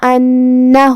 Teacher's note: کلمت انہو میں یہاں الف پہ زبر ہے تو ہم حمزہ کو ظاہر کریں گے. یہ حمزہ قطع ہے اور حمزہ کی ادائیگی حلق کے نیچے والی حصے سے ہے